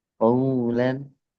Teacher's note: Tipiskan waw. Kof tebal tapi waw setelahnya tipis.